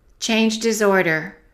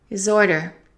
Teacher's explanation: Let's connect the D to the I because the H is eliminated. And let's connect the S to the O.